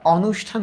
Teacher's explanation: মূর্ধ স এটা তালব্য স এর মত উচ্চারিত হয়